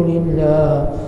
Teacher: Allah dibaca dengan nipis sebelumnya baris bawah.